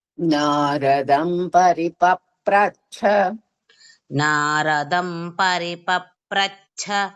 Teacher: చ కింద ఛ మహాప్రాణం ఉంది ద్విద్వాక్షరం